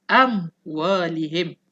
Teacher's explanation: Mim kena sebut daripada bibir. Bibir kena rapat. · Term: huruf mim